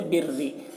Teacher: زیر والی رائے مشددہ کو باریک پڑھیں گے ، اگر رائے مشددہ یعنی را کے اوپر تشدید ہو اور